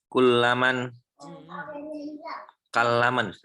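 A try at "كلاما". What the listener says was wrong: Kalaman, enggak tasdid, tanpa tasdid.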